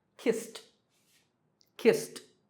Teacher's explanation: Number five, the last sound is s, which is unvoiced or voiceless, so kissed, kissed